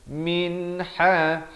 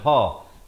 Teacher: Nun mati bertemu ha. Ha makhrajnya di tengah. Saya bagi tahu tadi, ke semua huruf yang lahir daripada makhraj kerongkong ini ada 6 kesemuanya, maka ianya dijelaskan saja. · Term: izhar halqi